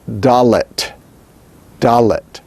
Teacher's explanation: With the dogish, it is dalet, dalet, a hard D, stop. An alveolar, stop, and voiced.